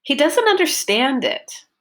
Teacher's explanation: my focus word was understand and my voice went up and down and I had a long clear which was my stressed syllable